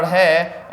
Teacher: अगर आप इनका उच्चारण करोगे जीभ आपकी ऊपर उठेगी फिर झटके से तुरंत नीचे गिरेगी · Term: द्विगुण व्यंजन